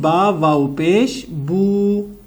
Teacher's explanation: جتنا ہم نے پیش کو کھینچا ہے اس سے دگنا، اس سے ڈبل ہم کھینچیں گے بو کو، یعنی با پیش بو، با واو پیش بو۔ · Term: حروف مدہ